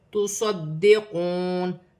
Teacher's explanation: دال مشدد ہے، جماؤں کے ساتھ ادا کیا جائے گا۔ واو ساکن سے پہلے پیش واو مدہ بنے گی، ایک الف کی مقدار کھینچ کر پڑھا جائے گا۔